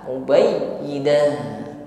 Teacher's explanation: Mubayyinah ditutup dengan ta marbutah, maka dibaca sebagaimana huruf ha.